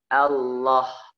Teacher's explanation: Jadi menyimpang, harusnya dia di gigi lam, ketika lafaz Allah dia ditaruh di gusi. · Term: lamul jalalah